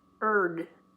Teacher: Don't put a sound for the I, otherwise you're going to get beard, like a man wears, or bear, the big animal. It's just bird.